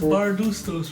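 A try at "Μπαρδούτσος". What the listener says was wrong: Bardutsos. It's not ST, it's TS. Chos, Bardutsos.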